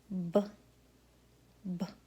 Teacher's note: The next is a voiced stop sound made on the lips